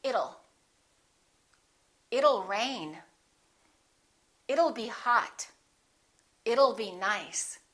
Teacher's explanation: let's change that t into a fast d and say it'll